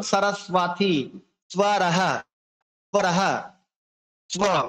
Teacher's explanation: আমরা বফলার মতো উচ্চারণ করবো, আমরা ওয়া উচ্চারণ করবো না, বড় উচ্চারণটা বহাল রাখবো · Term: বফলার উচ্চারণ